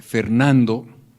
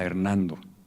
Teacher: el paso de F a una aspiración ocurrió en Castilla